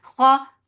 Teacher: Kha is heavy. So lift your tongue up to make kha heavy.